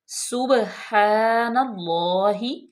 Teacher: سبحان اللہ، سین پہ پیش ہے، با ساکن ہے، اور با پہ قلقلہ کریں گے، یعنی کہ ہلا کے پڑھیں گے، جنبش دے کے